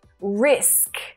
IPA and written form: rɪsk (RISK)